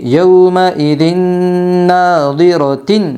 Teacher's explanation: یمن کے 4 حرفوں میں سے نون آئی ہے، اس لیے دو زیر تنوین کو غنہ کے ساتھ ملا کر پڑھے گے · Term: ادغام مع الغنہ